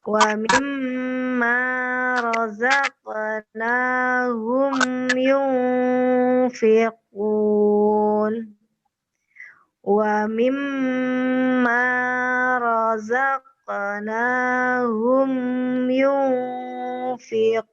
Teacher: Nah, kalau ini dibaca samar, ikhfa. Huruf nunnya kita baca di tempat keluarnya huruf fa.